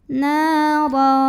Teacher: Maka cara bacanya dipanjangkan 2 harokat. Nara, huruf ra dibunyikan secara tafkhim karena ro-nya berbaris di atas tanwin fathah. Cara bacanya ditebalkan, pangkal lidah dinaikkan.